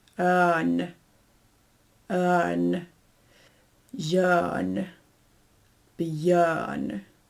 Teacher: basically, it's an R. You pronounce it, but just a teeny tiny bit. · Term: ghost R